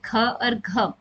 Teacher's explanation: सकते हैं जिसको बोलने में थोड़ा सा ज्यादा एफर्ट लगता है थोड़ा सा ज्यादा मेहनत लगती है या अधिक वायु का उपयोग होता है और वह हमारे कहलाएंगे महाप्राण